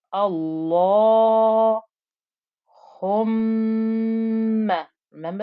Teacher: Because of the shadda, we'll have a ghunna, that nasal humming noise.